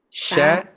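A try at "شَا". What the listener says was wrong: Nah, tanpa harus dimonyongkan bibirnya.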